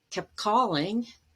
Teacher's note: might drop it kept you always say the t there but you have another stop sound after as in kept calling you might actually drop the t